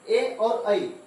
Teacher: ए और आई ये हमारा कंठ और तालु से दोनों के संयोग से इसका उच्चारण होगा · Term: कंठ तालु